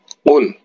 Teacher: huruf qaf ini harus berada di pangkal lidah bagian dalam